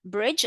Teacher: Even though this word has got the letter D, for D, you don't hear the word, you don't hear the sound of the D at all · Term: silent letters